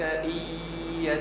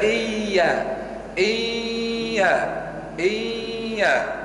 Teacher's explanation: صوت فموي خيشومي الاثنين معا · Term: الغنة